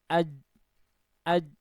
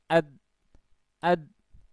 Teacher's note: Huruf tersebut ketika diucapkan ya sebagaimana pengertiannya tadi, aliran suaranya itu tertahan ya, tertahan terlebih dahulu sebelum keluar begitu sesuai dengan tanda bacanya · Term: sifat asyiddah